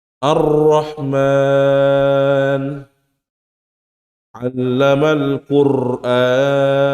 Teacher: memberi getaran kepada huruf ro begitu berlebihan. Ya, getaran sangat besar, sangat berlebihan.